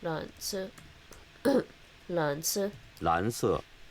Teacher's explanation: So 蓝 is rising and the 色 is falling.